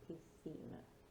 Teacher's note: here the SC, it needs to sound like a TH, a th sound